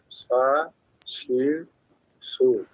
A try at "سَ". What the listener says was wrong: সামনের নিচে দুই দাঁতের আগার সাথে লাগবে না, শুধু উপরে দুই দাঁতের আগার সাথে, সা, জিব্বার আগা দাঁতের সাথে লাগে, শিন উচ্চারণ হয় কেন, শিন, শিন হইতেছে, শিন, শিন হচ্ছে সা, এটা সা না, সা না, এটা শিন না তো, সা, আপনি বলতেছেন সা, সা না, সা, সা, সা, সা, সা, নরম, সা,